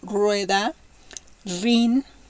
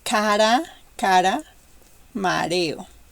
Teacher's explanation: strong at the beginning and weak in the middle